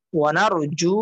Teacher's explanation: এই যে জু মাদের হরফ টেনে পড়তে হবে